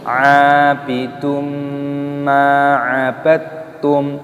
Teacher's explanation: ainnya dibaca panjang, ada tanda alifnya mad tabi'i dipanjangkan 2 ketukan, dan di sini ada dhammah tanwin yang bertemu dengan huruf mim.